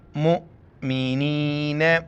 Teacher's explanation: میم امزہ پیش مو، جھٹکے کے ساتھ